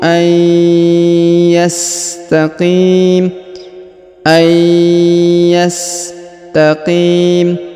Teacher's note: huruf Qi dipanjangkan boleh dua boleh empat ataupun enam harakat